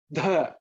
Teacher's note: Dha is the fourth one in the tha varga, aspirated.